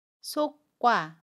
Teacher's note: 두 번째로 속과는 속과라고 발음해요. 속의 받침 기역 뒤에 자음 기역이 오면 첫소리 자음 기역을 쌍기역으로 발음해요. 그래서 속과가 됩니다. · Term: 된소리 되기